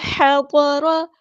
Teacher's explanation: ہا ہمیں وسطی حلق یعنی مڈل تھروٹ سے ادا کرنا ہے